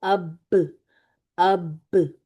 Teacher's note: تری والے تھوڑے اندر کی طرف ہوتے نا حصے، آپس میں ملنے سے حرف با ادا ہوتا ہے